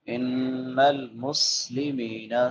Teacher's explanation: ان المسلمین، ان نون مشدد ہے، یہاں پہ غنہ ہوگا، ایک الف کی مقدار کے برابر آواز کو ناک میں لے کے جائیں